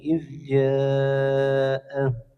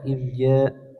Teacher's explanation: hukumnya mad wajib muttasil, dipanjangkan 4 sampai 5 harokat